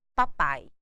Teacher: o a é mais forte o som do I decresce por isso ele é decrescente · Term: ditongo decrescente